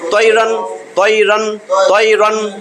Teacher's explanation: এখন আর গুন্না হবে না, কারণ তানবিনের পরে ইজহারের হরফ আসলে ইজহার স্পষ্ট কইরা গুন্না ছাড়া পড়তে হয়